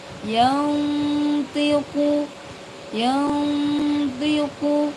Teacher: Di sini ada pelajaran nun sukun. Ini nun sukun bertemu dengan tho bertemu dengan huruf tho maka dibaca samar.